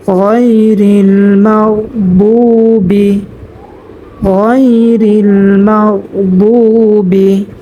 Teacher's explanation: 3 নম্বর মাখরাজ হলকের শেষ হতে গয়ন খ উচ্চারিত হয়। তো আমরা এখানে মা উচ্চারণ করব 3 নম্বর মাখরাজ থেকে।